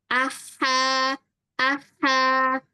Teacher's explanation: kalau huruf H itu dia kayak banyak hawanya.